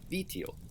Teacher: the base word is vitio, which has a high tone on the first syllable and low for the other two